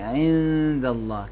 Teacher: نون ساکن کو دال میں چھپائیں گے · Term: اخفا